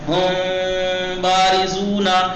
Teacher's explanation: جو میم ساکنہ کے بعد بے آ رہا ہے، میم میں یہاں اخفا ہو رہا ہے، یعنی ناک کی فضا سے میم کو کھینچ کے ادا کیا جا رہا ہے، ہونٹ نہیں مل رہے ہیں